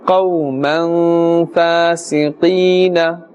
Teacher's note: The waw sakin with the fatha before it, this is a waw lean, and therefore no pulling is required and necessary. Ya sakin with the kasra before it, this is ya mad, and therefore a slight pulling up to the extent of one alif will take place.